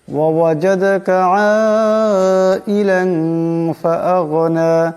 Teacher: আইলান, লামের উপর দুই জবরের তনবিন, এরপর ফা আসছে, ফা হলো ইকফার হরফ, তাই এখানে দুই জবরের তনবিনকে এক আলিফ পরিমাণ ইকফার গুণা করে পড়তে হবে